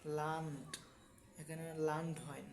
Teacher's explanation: অর্থাৎ ডে যদি শব্দের শেষে হয়, উচ্চারণ টয়ের মতো।